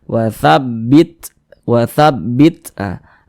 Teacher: Ta ini ketika dia sukun begini cara mengucapkannya watabbit watabbit Ah ada napas yang mengalir tapi dia seperti memercik karena huruf Ta ini dia salah satu huruf yang memiliki sifat hams